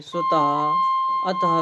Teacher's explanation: विसर्ग का उच्चारण करते समय हा जैसे हकार की ध्वनि आती है।